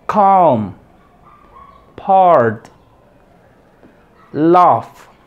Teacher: Aquí tenemos una A estresada, larga.